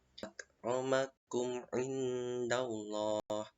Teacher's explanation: Jadi harus dibaca jelas. Idhar itu jelas, syafawi itu bibir. Jadi dibaca jelas di bibir. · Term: izhar syafawi